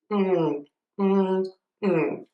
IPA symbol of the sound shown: ɔŋ